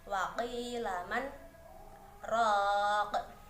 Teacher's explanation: bacaan saktah yang merupakan Berhenti sejenak dua ketukan namun tanpa mengambil nafas